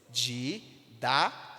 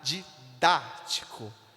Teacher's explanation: Na palavra didático, nós temos quantas sílabas? Didático. Temos 4 sílabas. A força está onde? No dá. Didático. É a terceira sílaba, percebe? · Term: antepenúltima